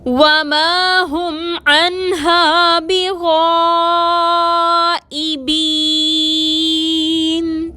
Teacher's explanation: بغائبین میں غائن حروف مستعلیہ میں سے ہے، موٹا پڑھیں گے اور اس کے ساتھ الف مدہ ہے اور اس کے بعد حمزہ آ رہا ہے، مد ہوگی، 4 حرکت کے برابر کھینچ کر پڑھیں گے.